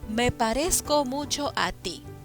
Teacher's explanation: al final del verso se encuentra la palabra ti es a ti donde lleva la mayor fuerza de voz en la única sílaba que tiene y por lo tanto es aguda